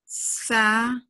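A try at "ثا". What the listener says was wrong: نہیں، آپ پکڑ ہی نہیں رہی. ہاں جی، زبان کو پکڑیے، 5 ٹائم بولیے، پکڑ کے رکھنا ہے سختی سے. جب آپ بولتی ہیں زبان آپ کے ہاتھ سے چھوٹ چکی ہوتی ہے.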